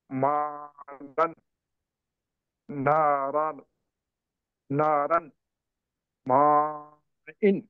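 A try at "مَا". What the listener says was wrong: ఇంకా దీర్ఘం తీయాలి. ఇక్కడ 4-5 హర్కాతులు దీర్ఘం తీయాలి.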